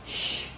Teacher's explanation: It is a voiceless sound, and it is produced when the tip of the tongue is touching the alveolar ridge, and the middle of the tongue is raised to the hard palate